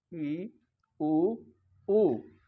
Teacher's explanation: अगला है संवृत यानी कि बंद, क्लोज, क्लोज मुंह बंद करके ही जिनका उच्चारण किया जाता है, जैसे ई उ ऊ। हल्का सा मुंह खोलते हैं, लगभग मुंह बंद से ही इनका उच्चारण हो जाता है